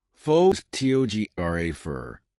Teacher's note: For instance, in the word photograph, the stress is on the first syllable, pho-to-graph, but in photographer, the stress moves to the second syllable